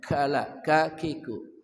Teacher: kaf dari pangkal lidah